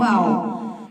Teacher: دونوں ہونٹوں کو گول کرنے سے ادا ہوتا ہے